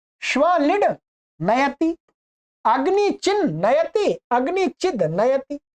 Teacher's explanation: यहां द को न हो गया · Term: अनुनासिक